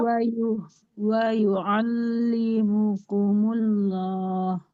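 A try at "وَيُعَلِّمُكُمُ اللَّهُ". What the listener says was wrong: Nah, lamnya tebal jadi tidak kumullah, tapi wa yu'allimukumullah. Allah. Allahu. Nah, wa yu'allimukumullah.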